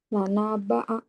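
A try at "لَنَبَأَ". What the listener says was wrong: kepanjang, nanya kepanjangan.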